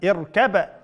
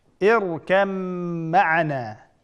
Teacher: ba oldidagisi harakatsiz, mim keyindagisi harakatli bo'lganligi uchun bu yerda idg'om qilib o'tdik